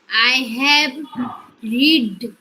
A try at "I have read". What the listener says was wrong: আচ্ছা, I have রিড তো হবে না, রিডের পাস্ট পার্টিসিপল ফর্ম বানান এক হলেও উচ্চারণটা রেড হয়ে যায়। তাহলে বলো, আই হ্যাভ রেড।